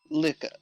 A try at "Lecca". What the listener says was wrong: Lecca. Not li. Le.